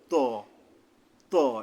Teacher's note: দুই দাঁতের গোড়ার থেকে মোটা ভাবে আদায় হবে জিহ্বার আগা সামনের উপরের দুই দাঁতের গোড়ার থেকে মোটা ভাবে আদায় হবে